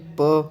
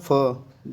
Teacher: प कम समय लग रहा है फ ज्यादा समय लग रहा है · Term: महाप्राण